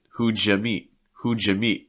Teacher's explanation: Notice that the U gets reduced into a Y.